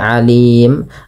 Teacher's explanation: Karena kita wakaf pada lafal mim tersebut maka mimnya berubah menjadi sukun gitu ya. Mim sukun. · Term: mad arid di sukun